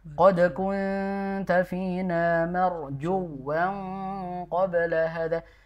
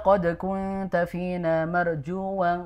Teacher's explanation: Ibu perhatikan di marjuwang ya. Jadi situ ada wawu yang tasdid. Maka cara bacanya ditekan.